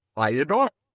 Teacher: we slip a little Y sound in there